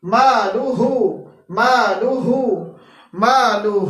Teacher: ہا آ رہا ہے جو کہ اقصا حلق سے ادا ہوتا ہے، جو کہ سینے کی طرف ہوتا ہے